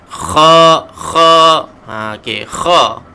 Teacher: Huruf kha adalah huruf yang keluar daripada halkum yang paling atas.